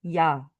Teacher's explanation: 야를 말하기 위해서 앞에 스쳐 지나가는 모음이라 반모음이야